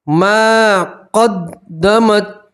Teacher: میم کے ساتھ الف بدہ اس لیے آپ ایک الف کے برابر کھینچیں گے